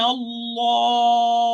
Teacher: this lam shamsiyya is totally merged into the second lam, this idgham mutamathilin, or identical merging